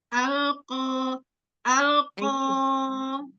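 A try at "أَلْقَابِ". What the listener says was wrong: Dorong lagi, alqo, keluaran suaranya, dikeluarkan suaranya. Jangan di dalam, dikeluarkan. Coba itu lidahnya tadi naik loh. Jangan naik depannya. Depannya nggak naik. Yang naik hanya pangkal lidah aja.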